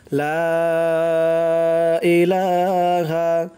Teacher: লা তিন আলিফ টান